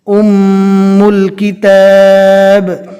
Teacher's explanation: میم کے اوپر تشدید ہے، میم کو ایک الف کے برابر گنہ کے ساتھ پڑھیں گے۔ گنہ بولتے ہیں منہ میں تھوڑی دیر آواز کو روک کر اور دبا کر رکھنا۔